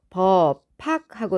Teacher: 흐는 기식을 동반하는 소리기 때문에 예사 소리를 거센 소리로 만들어 버립니다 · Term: 거센 소리 되기